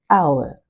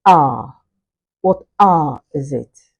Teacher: the full form where you clearly hear the three sounds, hour, compared to the smoothed form or the smoothed version where we'll simply hear ah